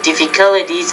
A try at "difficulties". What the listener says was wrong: you have word stress issue with that word